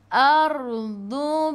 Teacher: ra baris atas kena baca tebal, lidah naik ke atas. Ardu bima, dadidu tepi lidah menyentuh gigi geraham atas.